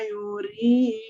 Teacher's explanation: Wa in tawallaw fa'lam annama yuridullah. Yuri ya, rinya bergetar karena Ro-nya kasroh ya. Kalau ro kasroh atau dia disukunkan oleh kasroh, maka bunyi ro-nya bergetarnya lebih jelas ya.